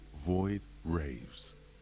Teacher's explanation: TH in some British accents can turn into like a V or an F sound instead. And so it was like almost like a little bit of void raves instead of wraiths.